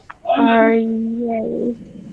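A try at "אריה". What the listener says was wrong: There you go.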